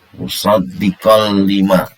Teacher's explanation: Suara tanwin ini, huruf qaf bertanwin ini, ya, dimasukkan atau dilebur pada huruf lam bilaguna dengan tidak dengung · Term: idgham bilaguna